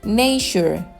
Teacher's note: También tiene el sonido de la CH española en la terminación ture y antes de la I y la U seguidas de vocal.